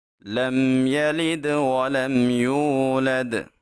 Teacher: جب واو ساکن ہو اور اس سے پہلے حرف کے اوپر پیش آ جائے تو وہ واو مدہ ہوتی ہے۔ واو مدہ کو ہم ایک الف کے برابر لمبا کر کے پڑھیں گے۔